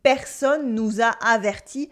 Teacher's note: he cuts the negation ne in personne nous a averti, because ne is the first thing that gets cut in fast everyday modern French.